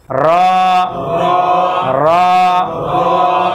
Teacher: র হচ্ছে জিহ্বা আমরা একটা বাড়ি দেবো ভিতরে, উল্টা পাশে একটা বাড়ি দেবো